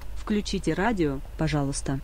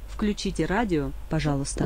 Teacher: I think the v changes to a f sound, so instead of a v, it's an f, because of the k being unvoiced afterwards.